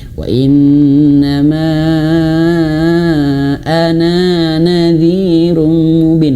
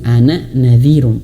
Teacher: Karena ana di sini tidak panjang.